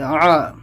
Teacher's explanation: عین کو حلق سے نکالیں گے سختی سے